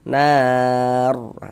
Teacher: Nah, jadi kalau ada huruf ro sukun jika sebelum ro sukun ada harakat fathah atau harakat dommah cuma di sini yang kita temui harakat fathah maka huruf ra sukunnya dibaca tebal dibaca tafkhimah